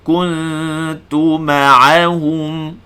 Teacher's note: Jadi kita sebut ku muncul 1 harakat, kemudian kita berpindah kepada huruf ta masa kita nak dengungkan ikhfa. Tunggu di huruf ta tanpa pijak makhraj ta. Jadi kontrol hujung lidah, jangan pijak makhraj ta.